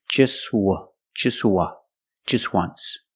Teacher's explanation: So phonetically, the T is between consonants. So it's silent.